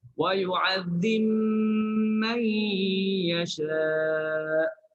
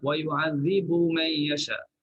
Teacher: Pada tempat ni dia baca dengan huruf ba idgham dalam mim. Ba idgham dalam mim.